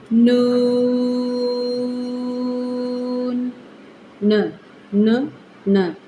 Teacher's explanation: नून का किनारा ऊपर वाले दो जो हमारे दांत है उनके मसूड़ों के साथ अंदरूनी तरफ मिलते हैं